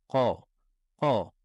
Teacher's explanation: la lettre Qaf se prononce en montant le fond de la langue et en la collant contre le fond du palais. C'est une lettre emphatique, on l'a dit qu'elle était coloriée en bleu, donc c'est une lettre grave.